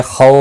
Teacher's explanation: واو لین ہے، تھوڑا نرمی کے ساتھ کھینچ کر ادا کریں گے